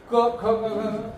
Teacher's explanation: So akuha visarjaniya, a, ka varga, ha, and visarga. Akuha visarjaniyanam kantha means you pronounce them with the major part that is active while saying them is the throat.